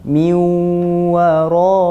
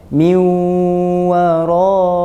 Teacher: ghunnah iaitu dengung dengan kadar dua harakat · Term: idgham maal ghunnah